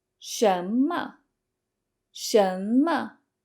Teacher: Ma is neutral tone, so you don't want to put any emphasis on it.